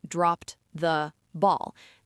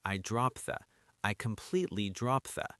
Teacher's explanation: The D and the T sounds kind of merge together.